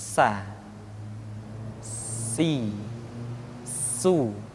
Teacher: ketika kita mengucapkan huruf sa ada suara tambahan yang menyerupai dengan suara belalang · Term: sifat as-safir